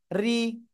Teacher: র অক্ষরের নিচে জের হলে চিকুন করে পড়তে হবে